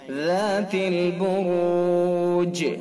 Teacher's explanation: اب جیم ساکن ہو گیا تو اس کے اندر قلقلہ ہوگا۔ قلقلہ، یہ قلقلہ یعنی حرکت کو پیچھے کو لوٹائیں گے۔